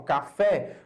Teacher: Quando eu falo café, a pronúncia do último som é uma pronúncia o quê? Mais aberta.